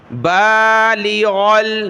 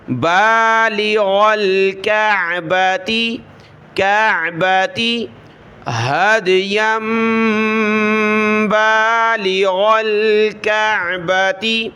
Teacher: با کو اوپر کھینچا، ایک الف کی مقدار